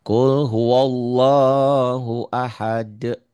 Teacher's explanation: Setiap mengucapkan lafaz Allah itu tebel tafkhim apabila didahului oleh fathah atau dhammah.